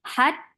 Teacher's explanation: Ta is a shadid letter. There is no flow of sound, and the sound cuts off abruptly. Hat, and then ta is 4 counts long.